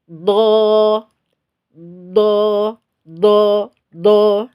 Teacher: apa udaranya atau nafasnya kita tahan karena ini nafas harus tertahan jahar itu tertahan nafasnya